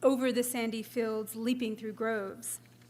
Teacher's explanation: Substitutions of trochees stressed unstressed for iambs are occasionally allowed especially in the first or fourth foot and after caesuras. Wordsworth for instance employs first and fourth foot trochaic substitutions in a line from the prelude